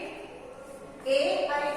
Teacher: ए, आई का जो उच्चारण स्थान है वो है कंठ तालु। कंठ तालु की यानी कि इनका उच्चारण है कंठ और तालु, दोनों को मिलाकर इनका उच्चारण स्थान होता है।